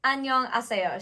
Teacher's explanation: You almost always have what's called H deletion.